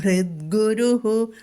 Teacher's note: ഗുരുഹു ഉകാരം വന്നതുകൊണ്ട് ഹു എന്ന് പറയാം · ഭൃത് എന്ന് പറയുന്നിടത്ത് മാത്രം ഒരു ചെറുതായിട്ട് ഒന്ന് ഘോഷം കൊടുക്കുക മൃദുവാകരുത്